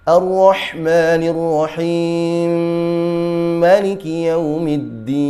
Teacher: Huruf rahim dapat dibaca dengan dua, empat, atau enam harakat. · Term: idgham kabir